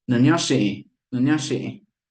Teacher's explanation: the last vowel should be creaky, so it's nasal and creaky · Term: nasal creaky vowel